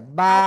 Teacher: দুই ঠোঁটের ভিজা অংশ থেকে এক আলিফ টানিয়া বা উচ্চারিত হয়।